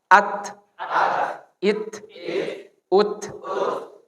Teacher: Nafasnya terputus. Suaranya terputus, anginnya keluar sedikit. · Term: ta